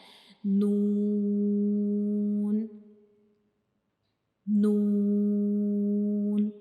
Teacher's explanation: तो नून की जो शेप है, शक्ल है वो हाफ सर्कल की तरह की है और इसके अंदर एक नुक्ता होता है और नून का मखरज क्या होता है कि जब हम नून को पढ़ते हैं तो हमारी जुबान की जो नोक होती है ऊपर वाले सामने वाले जो दो दांत होते हैं उनके अंदर वाली साइड पे जो मसूड़े होते हैं उनको टच करती है